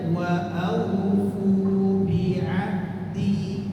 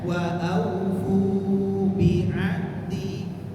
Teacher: Fu ini dua harokat saja.